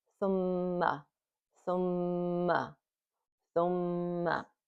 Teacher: There's a Meem with the shadda on it. It has a nasal sound, and we hold it for two beats or two counts. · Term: Meem mushaddada bi ghunna